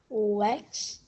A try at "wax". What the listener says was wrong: Okay, you said Wex. Is that what you see? Do you remember what this says? So rather than Wex, what would it be?